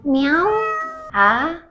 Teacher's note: The second tone is a rising tone or question tone.